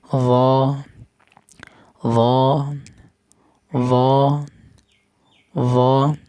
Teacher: র মোটা হরফ, মনে রাখবেন, ঘোরা উপর দিকে তুলে দিবেন।